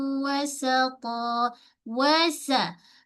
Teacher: kita masuk terus tanwin ke dalam wau tau muncung mulut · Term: idgham maal ghunnah